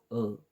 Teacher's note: जिभेचा मधला भाग उचलून जो स्वर उच्चारला जातो त्याला मध्य स्वर म्हणतात.